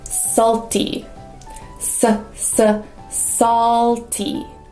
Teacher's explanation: That's a dark L in the back.